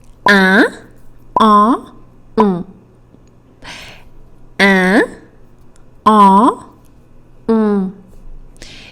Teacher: A nasal vowel, which means that you need your nose, the air is going to go through your nose to say that sound